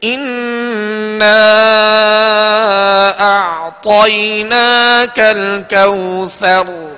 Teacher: اب کوثر را پر زبر ہے، اس کو ہم نے ساکن کر دیا وقف کی وجہ سے